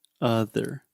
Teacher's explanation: or discover incorrectly one more time she is saying author so she's making the ah sound but this is the schwa sound so it should be other